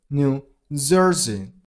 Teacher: You gotta stress on the first syllable of the second word, on zer.